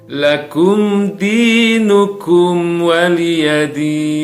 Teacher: sukun bertemu dengan huruf Dal ini telah It Hurts syafawi jadi harus dibaca dengan jelas harus dibaca dengan terang eh tidak boleh didengungkan tidak boleh ditahan